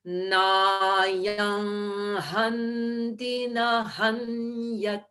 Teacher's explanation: I made that nasal sound at the end of nayam rather than at the lips, at the throat, because that's where hanti begins.